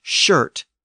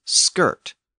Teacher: old English had a lot of words with an sh sound where Old Norse had the same words with an SK sound